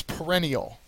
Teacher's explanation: perennial has the second syllable accented